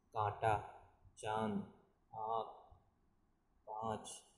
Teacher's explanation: इसका मतलब वायु का प्रवाह मुंह और नाक से होता है, ये अनुनासिक कहलाते हैं। इसका प्रयोग वर्णों के ऊपर चंद्र बिंदु के रूप में किया जाता है, जैसे कांटा, चांद, आँख, पाँच।